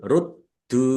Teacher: dalnya ada tasdidnya, dibaca double, ditekan biar tampak double. Ruddu, dal domah wawu sukun mat tobi'i, tetapi karena bertemu dengan huruf alif di kata yang berbeda, maka menjadi mad jaiz munfasil.